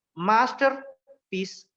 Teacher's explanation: మాస్టర్ పీస్ లో only stress మాస్టర్ మీద ఇస్తాము, పీస్ మీద ఇవ్వము